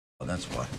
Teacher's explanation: That has a little bit of stress. And then the energy of the voice just continues down with the next word why.